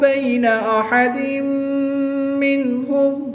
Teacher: تنوین کے بعد میم حروف ملون میں سے ہے تو یہاں پر ادغام مع الغنہ ہوگا. نون ساکن کے بعد حروف حلقی میں سے ہا ہے تو یہاں پر اظہار ہوگا.